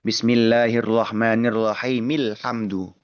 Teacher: Hamzah yang dibaca di sebagian kondisi ee dalam artian dibaca ketika di awal bacaan. Dan hamzah hamzah wasal ini memang tidak boleh dibaca ketika menyambung dengan kata yang sebelumnya dalam satu nafas